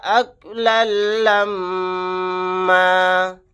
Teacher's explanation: میم کے اوپر لاسٹ میں تشدید ہے، یہاں پر غنہ کر کے پڑھیں گے